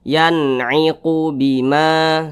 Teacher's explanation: Karena dia izhar maka dibaca jelas, tidak berdengung. Jadi dibaca pendek saja. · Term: izhar halqi